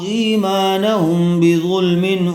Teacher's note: میم ساکن کے بعد با آ جائے تو اس کو غنہ کے ساتھ اخفا کر کے پڑھیں گے ، اس کو اخفائے شفوی کہتے ہیں. ہم، با زیر بھی،